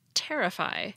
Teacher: the verb terrify has stress on the first syllable